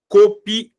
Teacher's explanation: Aqui no caso, ó, a vogal mais forte é o A. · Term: sílaba tônica